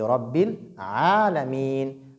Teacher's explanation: Et après Ain, nous avons Alif qui est une lettre de prolongation. Et ici qui est prolongée de deux mouvements seulement.